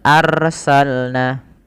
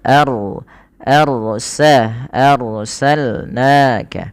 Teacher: dibaca dengan dua harakat eh maaf dibaca dengan RO di sini dibaca dengan ro yang tebal yaitu adanya huruf ro sukun didahului dengan huruf fathah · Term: ro tafkhim